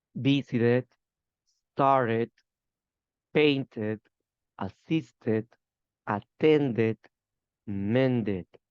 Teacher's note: Only in this group, verbs ending in T or D, I pronounce an extra syllable.